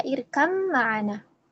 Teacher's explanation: Tidak ada ba ya. Jadi langsung masuk ke huruf mim sehingga mimnya menjadi bertasydid ya dan dihukumi dengan idgham.